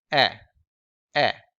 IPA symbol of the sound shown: ɛ